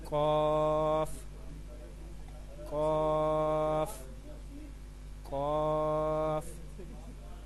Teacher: قاف زبان کی جڑ اور تالو کے نرم حصے سے ادا ہوتا ہے. آپ اپنی زبان کی جڑ اس کو اپنے تالو کے نرم حصے کے ساتھ ملانا ہے اور وہاں سے ادا کرنا ہے.